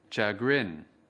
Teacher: Từ chagrin có hai âm tiết. Trọng âm của từ chagrin ở âm tiết thứ hai.